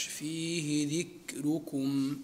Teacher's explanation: الراء هنا تقرأ بالترقيق لورش